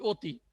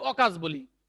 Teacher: তাহলে এখানকার উচ্চারণ অ বজায় থাকছে, কিন্তু এই অতীতে দেখো অ এর উচ্চারণ হয়ে যাচ্ছে ও এর মতন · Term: সংবৃত